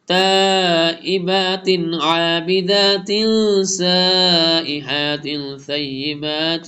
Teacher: اظہار ہم نے کیا کلیئر ریڈ کیا کہ بالکل نون کا ساؤنڈ کلیئر ہے